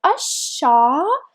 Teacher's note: Again, we have article al, but we will not pronounce letter lam because letter shin is a sun letter, and we know that because above it we have shadda.